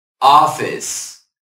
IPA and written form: ˈɑː.fɪs (office)